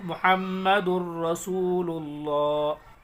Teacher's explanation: لام اور را کی صورت میں بغیر گنہ کے پڑھیں گے